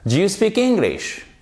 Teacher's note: vous avez une intonation qui est montante